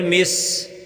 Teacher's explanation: سین کو سٹی کی طرح ادا کریں